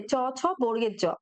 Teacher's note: এগুলো কিন্তু তালু থেকে উচ্চারিত হয়, তাই এদেরকে তালব্য ধ্বনি বলা হয়